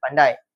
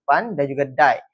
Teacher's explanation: Bunyi huruf A yang lebih dominan dan bunyi huruf I bertindak sebagai luncuran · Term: diftong